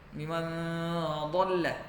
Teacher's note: Di sini lanjut biman dhalla, nun ketemu dha. Biman dhalla dengan ikhfa, hukumnya ikhfa hakiki, jadi dibaca sama dengung dan samar-samar